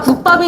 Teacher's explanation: 안눌림 예사 소리와 안눌림 예사 소리가 만나면 뒤에 된 소리로 바뀝니다. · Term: 된 소리 되기